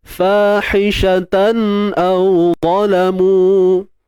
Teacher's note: Fahishatan tan tu gunnah asli. Benda tu kita tak payah buat. Dia secara tabi'i dia datang.